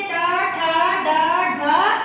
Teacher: जीभ का अगला भाग, जो वर्णों का उच्चारण करने के समय क्या होता है? उलट कर छूता है। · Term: मूर्धन्य वर्ण